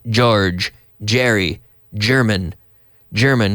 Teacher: we basically have a CH sound and then you activate the vocal cords